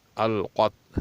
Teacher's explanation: اس میں قاف جو ہے حروف مستعلیہ میں سے ہے، اس کو موٹا پڑھا جائے گا